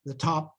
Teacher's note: And that occurs at the ends of words in English. So that top is not aspirated typically, like the top of the desk.